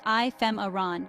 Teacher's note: The pronunciation is ephemeron with the stress on the second syllable.